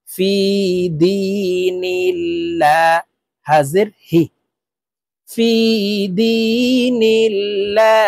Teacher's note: ফি দি, নুন লাম জের নীল, ফি দি নীল, লাম খারা জবর লা। আল্লাহ শব্দের আগের হরফে জের থাকলে এই লামকে লা অর্থাৎ পাতলা করিয়া পড়িতে হয়